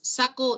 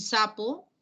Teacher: para saco, esa consonante resaltada de azul es una consonante oclusiva velar sorda, mientras que en sapo, la consonante coloreada de azul es una consonante oclusiva bilabial sorda